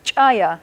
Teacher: Here's an example of the glottalized CH.